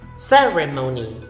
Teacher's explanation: So the stress is in the first syllable. Not ceremony.